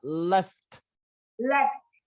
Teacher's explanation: F là răng trên cắn môi dưới, thổi ra